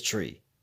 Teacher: In Pidgin, they don't use 3, it's always tree. 3 is tree.